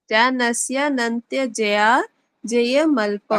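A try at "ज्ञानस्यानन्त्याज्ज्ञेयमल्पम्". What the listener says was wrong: कहाँ है जया? कहाँ जया कहाँ है जी? याद है, आप जया बोल रहे हो उसको। जानस्य नन्तया, बस इतना बोलना आपने।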